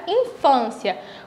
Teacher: infância tem um som mais fechado, tanto por conta do acento circunflexo, quanto por causa da consoante que vem depois